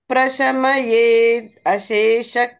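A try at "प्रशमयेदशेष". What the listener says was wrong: ప్రశమయేత్ ప్రశమయేత్ అని ఆపితే పర్వాలేదు, ఆపకుండా ఫ్లోలో ప్రశమయే దశేష అనాలి. ప్రశమయే దశేష, ప్రశమయే దశేష.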